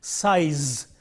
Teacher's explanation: you have the S sound initially and Z sound finally. And we have to make sure that the voicing is important when we produce this word. · In the initial position it is voiceless, and in the final position it is voiced.